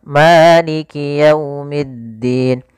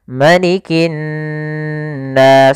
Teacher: Tapi di surat An-Nas ini ma-nya pendek.